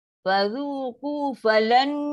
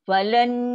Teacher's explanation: Nun huruf pertama masuk ke huruf kedua. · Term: dengung paling sempurna